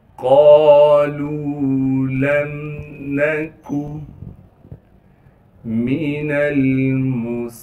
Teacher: قالوا لم نکو من المصلین، میم کو بغیر کھینچے پڑھیں گے، نون کو لام ساکن سے ملائیں گے، اس میم کو بھی بغیر کھینچے پڑھنا ہے، صاد کو موٹا کر کے صاد کی سیٹی ادا کریں گے، صاد کو آگے لام سے ملا دیں گے جس پر تشدید ہے، تشدید ہونے کی وجہ سے تھوڑا سا ٹھہراؤ رکھیں گے، پھر لام کو آگے یا مدہ سے ملا دیں گے، یا مدہ ہونے کی وجہ سے لام کو ایک الف کے مقدار کھینچیں گے۔